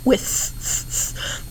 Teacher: Now this one is tricky because many of them want to say that it's F, but actually it's the TH because the tongue will push through the teeth